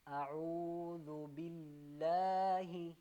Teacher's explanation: یہاں باللہ کی جو لام ہے نا، اس کو ہم نے باریک پڑھنا